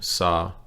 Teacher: the first half of the word has a low tone saw second half of the word no tone at all right